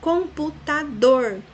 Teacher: Computador, dor é a última sílaba, a mais forte, portanto é oxítona.